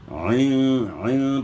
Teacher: عین کے بعد نکالنی ہے گلے کے درمیان سے، عین کا مخرج گلے کا درمیان ہے